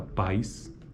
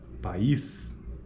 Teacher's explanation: palavras pais e país e ilustram ditongo na primeira palavra então a palavra pais é um ditongo enquanto que país é uma sequência de vogais